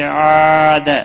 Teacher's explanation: الف مدہ ہے، ایک الف کے برابر کھینچ کر پڑھیں گے، دا کو کھینچنا نہیں